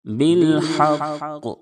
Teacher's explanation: قاف چونکہ حروف قلقلہ کے 5 حرفوں میں سے ہے اور مشدد ہے، اس لیے وقفاً قاف کی آواز لوٹ جائے گی